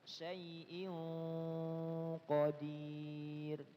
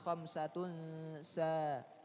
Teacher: Nun sukun ketemu huruf qaf, dia isti'la. Tapi kalau ketemu huruf sin, tipis